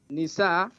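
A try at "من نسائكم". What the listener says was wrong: You skip. You said min. Not nisa. Min nisaikum.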